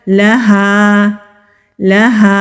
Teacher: लाम को जल्दी अदा करेंगे लाहा नहीं पढ़ेंगे वरना गलत हो जाएगा लहा लहा हा हलक से अदा होगा